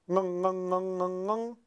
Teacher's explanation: And when we make this sound, ng, ng, ng, ng, ng, we can feel the tongue, the back of our tongue, touching the velum